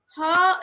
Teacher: Ha is pronounced in the throat